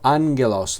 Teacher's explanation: Que es la palabra ángel en griego, ángelos y no se pronuncia agalos, sino ángelos. La primera gama se pronuncia como si fuera una n, ¿vale? Y la siguiente como la gama, el el sonido de de una g, ¿vale? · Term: dos gamas seguidas